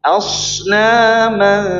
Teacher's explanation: Ikhfanya asnaman datar, jangan diangkat suaranya.